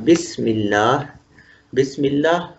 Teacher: بسم اللہ میں میم کے نیچے زیر ہے تو ما قبل میم ہے، میم کے نیچے زیر ہے، اس لیے لفظ اللہ کے لام ثانی کو ہم نے پتلا کر دیا